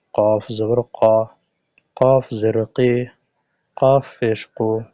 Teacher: কফের মাখরাজ হলো জিহ্বার গোড়া তার বরাবর উপরে তালুর সঙ্গে লাগিয়ে কফ উচ্চারিত হয়